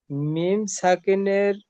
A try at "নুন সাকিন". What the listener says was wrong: নুন এটি মিম নয়।